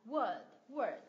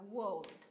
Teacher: thì mình chỉ đọc âm đ thôi không có L nữa